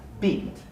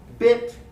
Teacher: beat is longer and tense bit is shorter and lacks so there really are two properties that are different